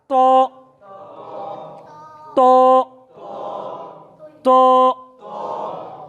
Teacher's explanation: উচ্চারণের স্থান জিহ্বার আগা উপরের দাঁতের গোড়ার সাথে লাগিয়ে। এই অক্ষরটির ভুল উচ্চারণ তুয়া, অনেক আগে মুরব্বীরা পড়ছেন তৈ, তুয়া অথবা তৈ ভুল।